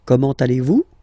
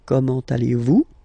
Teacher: it's a question, so raise a little bit your voice at the end, like comment allez-vous?